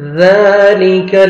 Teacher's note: ذال کو فتح الف صغیرہ 1 سیکنڈ ذال کو کھینچنا ہے اور ذال کو نرمی سے ادا کرنا ہے